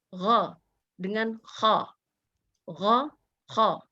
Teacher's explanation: Bedanya kalau ghain itu ada gesekannya ya, jadi gha nggak jadi go. Kadang-kadang kita dengar ya orang baca goin jadi go gitu, padahal tidak seperti itu.